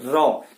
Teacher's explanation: आपकी जिह्वा थोड़ी देर अपने ही स्थान पर ऐसे ट्रिलिंग करती है, क्षणिक करती है। बोल के देखिए, र क्षणिक ट्रिलिंग करती है, सेकंड के लिए ट्रिलिंग करती है। · र जब आप बोलेंगे तो आपकी जिह्वा, जीभ का अगला हिस्सा ट्रिलिंग करेगा, ट्रिलिंग कुछ देर तक ऐसे ट्रिलिंग करेगा। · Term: लुंठित प्रकंपी